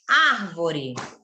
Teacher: nós temos a proparoxítona a sílaba tônica é a antepenúltima